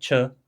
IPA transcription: t͡ʃə